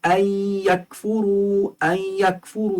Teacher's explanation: ادغام مع الغنہ ہے، ان یکفروا، کیونکہ نون ساکن کے بعد یا آ رہی ہے